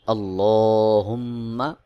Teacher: মিমের উপর তাশদিদ রয়েছে গুন্নাহ করে উচ্চারণ করতে হবে